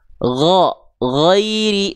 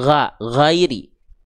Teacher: dia akan terdengar tidak dengan vokal A, tapi seperti vokal O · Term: huruf tebal